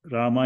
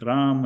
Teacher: not pronouncing the A at the end is generally the effect of Hindi and English on Sanskrit pronunciation, whereas making it long is generally the effect of English.